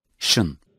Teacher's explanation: pronounced by touching the palate with the middle part of the tongue. Its sound is similar to sh, as in shrink.